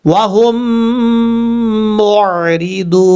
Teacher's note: سے پر پڑھا جائے گا، ضاد کے بعد واو مدہ ہے، ضاد کو جب واو سے ملائیں گے تو ایک الف کی مقدار لمبا کر کے پڑھنا ہے